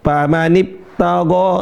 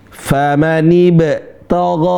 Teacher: teman-teman sering baca kayak p bukan kayak b yang sebenarnya yang benar adalah b yang mantul